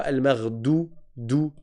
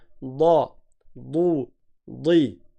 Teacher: Toute la langue, jusqu'à l'arrière, elle monte.